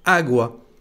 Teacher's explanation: quand on le prononce vous entendez que l'accent porte sur la première lettre